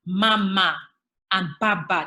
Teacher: the nasal equivalents of baba, like mama and baba. They are both bilabial production.